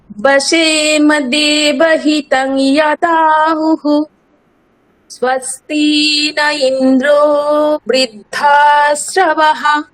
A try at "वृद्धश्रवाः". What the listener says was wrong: আকার দীর্ঘ, বৃদ্ধশ্রবাহ, আকারটা দীর্ঘ বলতে হবে আবার।